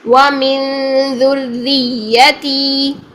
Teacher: تی 2 سیکنڈ کے لیے لمبا. یا مدہ ہے یہاں پر. ذریاتی کر کے ہم تی کو بھی چھوٹا کر دیتے ہیں, یا کو لمبا کر دیتے ہیں.